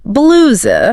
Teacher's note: with that long ooh sound